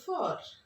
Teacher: যারা আমেরিকান থাকে তারা আবার বলছে ফর ক্লিয়ারলি আর এর উচ্চারণটা করে